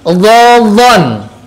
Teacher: Kalau saya enak menggunakan sebelah kiri. Nah, pinggir lidah ini digigitkan dengan gigi geraham · huruf yang keluar dari al-lisan, lidah, tapi lidahnya bagian pinggir. Pinggirnya boleh pinggir sebelah kiri atau kanan.